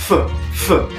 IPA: ϕ